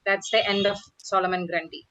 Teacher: You would not pause soon after end.